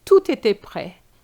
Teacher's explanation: Just link it, the T and the E.